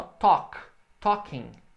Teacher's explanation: o L não é pronunciado, não é talking. É só talk.